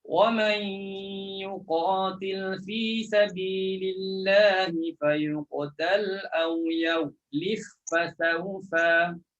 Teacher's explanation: Terus masukkan ba dalam fa. Dah tak ada lagi qalqalah.